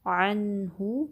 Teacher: اغنا، عین کی فتحہ کو نون ساکن سے ملائیں گے۔ عن، ہا پہ دمہ ہے، ایک حرکت لمبا کریں گے، ہونٹوں کو گول کریں گے۔